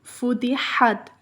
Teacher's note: ح حروف حلقی میں سے ہے اور درمیانی حلق سے دباؤ کے ساتھ ادا ہوتا ہے اور اسے ہوا کے ساتھ ادا کیا جاتا ہے، جیسے فتحت، یہاں پر فتحت نہیں ہوگا، فتحت۔